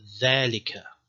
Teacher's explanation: a voiced interdental fricative the letter is called zal, and the example here is dhalika.